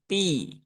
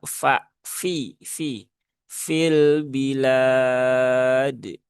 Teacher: fa itu tipis ya karena dia memang huruf tipis. Jangan sampai keluar bunyi huruf P ya.